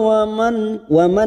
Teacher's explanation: nun sukun bertemu Ain namanya bacaan iidhar halq kita baca jelas tanpa mendengung